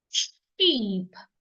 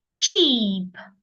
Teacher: it slowly and you go sh sheep but the CH sound you will not release the sound slowly you release it suddenly